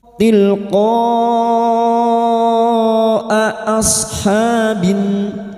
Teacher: Bertemunya mad dengan hamzah dalam satu kalimat, mad wajib mutasil. Mad wajib mutasil 5 harokat kita panjangkan.